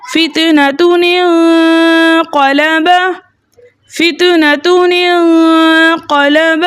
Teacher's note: تنوین میں چھپا نون ساکن تھا، اس کو ہم نے زیر دے کے اگلے کلمے سے ملا کر پڑھا کیونکہ حمزۃ الوصل درمیانی کلام میں آنے کی وجہ سے حذف ہو گیا تھا.